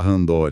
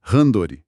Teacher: Com aquela força no dor, mas a pronúncia japonesa ela é mais plana